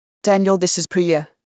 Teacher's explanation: put the main stress on the name